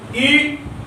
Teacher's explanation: ये जीभ के अगले भाग से उच्चारित हो रहा है